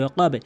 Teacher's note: বাটি হচ্ছে নিচের দিকে সাউন্ড, কলকলা ধাক্কা দিয়ে পড়তে হবে